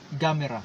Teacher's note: Parang may diin dun sa ga. It's mera. Gamera.